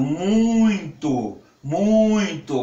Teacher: para pronunciar muito, vai ser necessário a presença da fossa nasal para formar esse fonema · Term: nasalizado